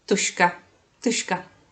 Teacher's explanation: Instead of ž, I say š.